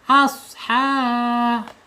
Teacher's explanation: Asha ha-nya panjang mad th'i. Panjangnya dua harakat ya. Satu alif atau dua ketukan.